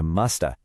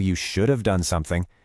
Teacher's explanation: we take words like could or should and we just merge them with have